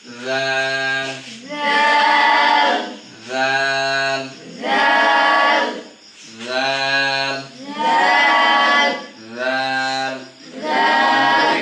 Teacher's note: জিহ্বার আগা সামনের উপরে দুইটাতে আগার সাথে লাগাই দিতে হবে।